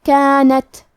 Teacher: کلمت کانت کے آخری میں تا ساکن ہے، تا بھی حروف الہمس میں سے ہے تو ہمیں یہ کلمہ کو ایسے پڑھنا ہے کانت۔